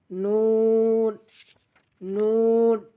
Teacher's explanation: জিহ্বার আগা তার বরাবর উপরে তালুর সঙ্গে লাগাবো